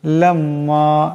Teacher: লাম্মা, এখানে মিম মুশাদ্দাদ, মিম মুশাদ্দাদকে একালে পরিমাণ গুণনা করিয়া পড়তে হবে।